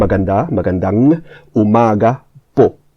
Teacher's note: Magandang, the stress is at the end, magandang umaga po.